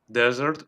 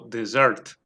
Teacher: Y las dos pronunciaciones son correctas, o sea, los dos acentos. Podemos acentuar en la primera sílaba o en la última, dessert o dessert.